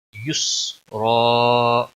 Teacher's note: را کے اوپر دو زبر ہے موٹا پڑیں گے ، اور وقف کی صورت میں وقف بالابدال ہوگا، دو زبر